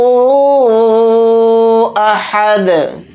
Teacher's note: दाल के ऊपर जज़म लगाकर पढ़ेंगे तो दाल के अंदर क़लक़ला करेंगे, क्योंकि दाल के ऊपर जज़म लगाने से दाल हुरूफ़ क़लक़ला के हुरूफ में से एक हर्फ है।